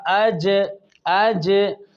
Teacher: آگے مخرج نمبر 7، وسط زبان یعنی زبان کا درمیان، یہ والا حصہ یہ میں آپ سب کے سامنے نکال رہا ہوں، یہ زبان کا درمیان، اس کو کہتے ہیں وسط زبان، اور اس کے مقابل اوپر کا تالو، اس سے جیم، شین اور یا متحرک اور یا لین ادا ہوتے ہیں